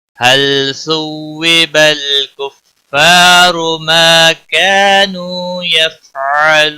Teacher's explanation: مد العارض وقفی ہوگا، 3 سے 5 الف کے برابر کھینچ کر پڑھیں گے